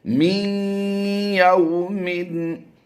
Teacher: یہاں پر نون کی آواز سائلنٹ ہوگی اور یا کی آواز کو ہم ظاہر کریں گے، می، یا واو زبر یو، واو لین کا قاعدہ ہوتا ہے، یا واو زبر یو، واو لین کا قاعدہ ہے، یہاں پر لمبا نہیں کریں گے۔ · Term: ادغام مع الغنہ